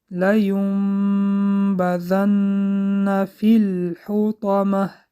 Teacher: لینبذن در اینجا اقلاب حرف نون به حرف میم مبدل گشت و از دماغ برآورده خواندیم با غنه خواندیم